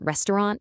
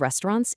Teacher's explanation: dropping those final consonants, like saying restaurant instead of restaurants